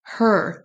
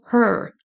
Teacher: Il faut bien donc prononcer le H, penser à traîner sur le E et le R, on l'entend à peine.